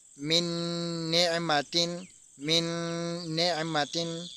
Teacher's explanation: ہم نے پیچھے والے نون کو نہیں پڑھا بلکہ اگلے نون کے ساتھ میم کو ملا کے پڑھا ہے ، کیونکہ یہاں پر ہم نے ادغام کیا ہے، من نعمتن،